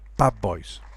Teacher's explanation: Notice that there's no change in voicing here. We have a voice sound, d, becoming another voice sound, b. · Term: assimilation